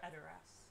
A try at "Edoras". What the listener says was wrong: You have to roll the R.